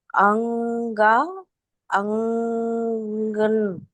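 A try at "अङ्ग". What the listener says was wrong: You're just adding an at the end, no? Anga. Anga. Anga. You're not able to drop the sound.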